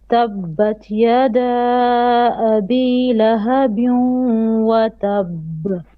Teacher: You have a tanween on the ba. Ba, tanween, and then wow. So we do lahabin. You merge. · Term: idgham with ghunna